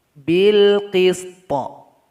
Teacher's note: Di ayat 25 surat Al-Hadid, di sini ada waqaf jim. Cara berwaqaf di sini adalah huruf to mesti kita sukunkan. Jadi nanti kita kasih qalqalah di akhir bunyinya.